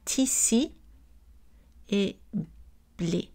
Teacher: La transformation des voyelles antérieures arrondies en voyelles non arrondies.